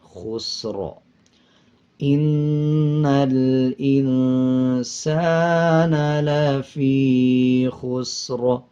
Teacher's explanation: را سے پہلے والے الفاظ کے اوپر اگر زبر پیش آ جائے تب بھی را کو پر پڑھا جائے، اور اگر اس سے پچھلے الفاظ کے اوپر پیش یا زبر آ جائے، اب جیسے سین کے اوپر جزم ہے اور اس سے پچھلے الفاظ کے اوپر پیش آ رہا ہے، تو تب وقف کرتے ہوئے را کو پر پڑھیں گے یعنی موٹا پڑھیں گے